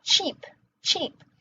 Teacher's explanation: Spanish doesn't have the sh sound, right? So they're not going to say sheep, they're going to say cheap